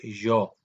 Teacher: La Y en Costa Rica, la Y se pronuncia fricativa. Esto varía en el español.